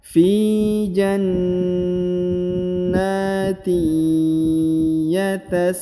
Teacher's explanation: Kemudian huruf lu dipanjangkan 2, 4 atau 6 harokat karena di depannya terdapat waw sukun atau waw mati sebelum huruf pemberhentian, ya. Dan huruf pemberhentiannya huruf na disukunkan atau dimatikan karena berada di ujung ayat atau di ujung bacaan